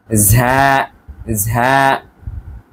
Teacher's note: ঝা একটু চাপ দিয়ে ভেতর থেকে একটি বাতাস বের হবে, ঝা ঝা। তারপরে এটা হচ্ছে সিন, শিন, সদ, বদ, ত, জ, আইন।